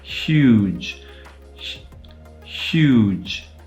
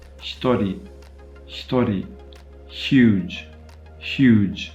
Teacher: If I say huge and just try and cut off the first sound I make when I say that word, huge, huge, that is a voiceless palatal fricative.